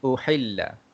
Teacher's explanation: Yang pertama sekali, pada perkataan uhilla, tuan-tuan dan puan, perkataan uhilla dekat sini, okey, ha itu adalah ha pedas, okey. Jadi kita kena baca dalam sikit, uhilla begitu, okey.